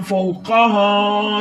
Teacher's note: फाउ काफ के ऊपर ज़बर है, काफ बगैर खींचे पढ़ेंगे और इसको मोटा करेंगे। हा जो ये वाला है इसके ऊपर ज़बर है, हा बगैर खींचे पढ़ेंगे, मगर ये सीने के जोर से अदा होगा। · हा बगैर खींचे पढ़ेंगे, मगर ये सीने के जोर से अदा होगा। ये मोटा होगा, कलकला होगा और ये सीने के जोर से अदा होगा।